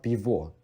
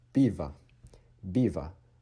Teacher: because this is not on the stress syllable, O is de-stressed as A. So it's not bivo, it is biva.